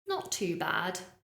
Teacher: I'm using using falling intonation